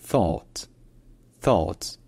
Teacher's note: un a donc un peu comme un A français mais plus en arrière plus au fond de la bouche